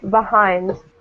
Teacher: since hind has the stress, we usually pronounce this E neutral.